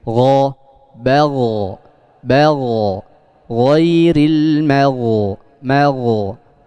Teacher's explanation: Jadi dihasilkannya huruf yang tebal itu karena naiknya lidah yang belakang.